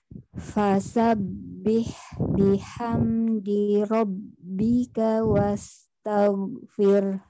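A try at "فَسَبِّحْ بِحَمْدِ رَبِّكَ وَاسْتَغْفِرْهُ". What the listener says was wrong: Iya, enak kan? Iya, tetapi mau dikeluarkan huruf H yang sukun karena wakof di H-nya. Wastaghfir.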